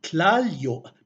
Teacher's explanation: What happens in Nahuatl, many dialects of Nahuatl, is that when this yo suffix, or when the y follows an l from a previous stem, the y tends to assimilate to form a second l. This is called assimilation in linguistics.